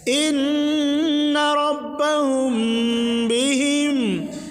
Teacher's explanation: میم ساکن کے بعد اگر با آئے تو غنہ کے ساتھ اخفاء ہوگا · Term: اخفاء شفوی